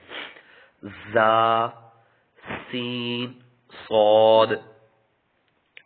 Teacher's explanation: حروف صفیریہ جن کی تعداد 3 ہے زبان کی نوک اور دونوں دانتوں کے اندرونی کنارے سے ادا ہوتے ہیں